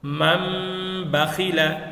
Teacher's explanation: তাহলে উক্ত নুন সাকিন বা তানউইনকে মিম দ্বারা পরিবর্তন করতে হয় যদিও এখানে আছে নুন কিন্তু এই নুনটা মিমে পরিবর্তন হয়ে গিয়েছে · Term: ইকলাবের